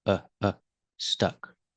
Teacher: when you say stuck use the short uh sound like cup and up it's relaxed